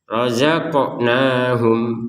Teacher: Jangan sekedar rozakna. Itu kan nggak ada pantulan, harus dipantulkan qafnya.